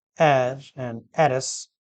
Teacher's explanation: there is no ha sound these words begin with a vowel sound